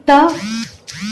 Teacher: त उच्चारण में वायु दांतों के निकट रुक कर निकलती है। देखिए त बोलिए, त देखिए दांत के पास आपके रुक रही है ना, हवा जो है वो दांत के पास रुक रही है ना।